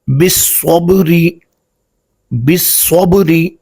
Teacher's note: جی ناظرین مکرم، یہ جو صاد ہے اس کو چونکہ یہ حروف مستعلیہ میں سے ہے تو اس کو ہم پر پڑھیں گے، اور با چونکہ حروف قلقلہ ہے تو با ساکن ہے تو اس پر ہم قلقلہ کریں گے